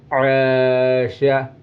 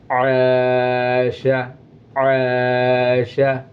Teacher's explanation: دیکھو آ نہیں بولنا، حلق سے یہ آواز نکلنا چاہیے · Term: عین